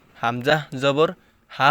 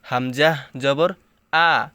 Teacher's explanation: হামজাহ জবর অনেকে হা বলে ফেলে, হামজাহ জবর হা হবে না, হামজাহ জবর আ, মানে আলিফ আর হামজার উচ্চারণটা একই রকম হবে।